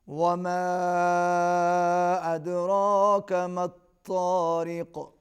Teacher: وما کے اوپر چھوٹی مد ہے، دال پر قلقلہ ہوگا۔ ما الطارق، طا کو موٹا پڑھیں گے، را کو باریک پڑھیں گے، قاف پر بھی قلقلہ ہوگا۔